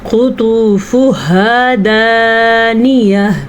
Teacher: ٹھیک ہے، یہاں پہ ہا جو ہے گول ہا، اس کی آواز آنی چاہیے. گول تا وقف کی حالت میں گول ہا بن جاتی ہے